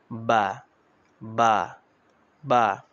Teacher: বা হচ্ছে দুই ঠোঁটের ভিজা অংশ থেকে